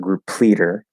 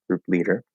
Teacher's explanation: when the stop sounds connect over they're always unaspirated